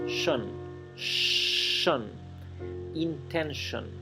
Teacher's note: la terminación T-I-O-N no se pronuncia tion, se pronuncia shon